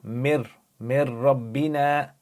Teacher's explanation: Join the meme to the ra, don't pronounce the noon, you say mir rabbina, because you have a noon sakin over there, and then you have a ra, yarmalun letter. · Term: idgham